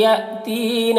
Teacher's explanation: یہاں پر حمزہ ساکنہ ہے، یا میں جھٹکا لگے گا